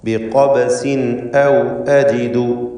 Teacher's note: ബിഖബസിൻ ഈ പദത്തിൽ ഖാഫിനെ തഫ്ഖീം ചെയ്ത് തടിപ്പിക്കുക. ഇസ്തിഅലാന്റെ ഹർഫുകളിൽപ്പെട്ടതാണ് ഖാഫ്.